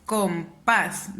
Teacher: ¿Dónde mi voz se eleva más? En el pas. · Como mi voz suena más en la última sílaba, es una palabra aguda.